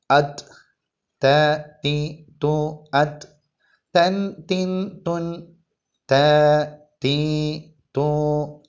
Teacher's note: നാവിന്റെ തല മേലെ മുൻപല്ലിന്റെ മുരട്ടിൽ നിന്നാണ് ഉച്ചരിക്കേണ്ടത്